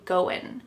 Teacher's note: that final G in the word going is going to be cut off and we'll just say going.